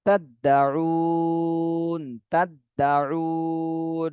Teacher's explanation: উতে তিন আলিফ টান দিতে হবে আর নুনে জজম দিয়ে পড়তে হবে।